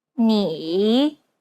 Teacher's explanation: It's the most unique tone out of all the tones because the pitch dips and then rises. 你 Imagine a ball bouncing on the ground as you make this tone. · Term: third tone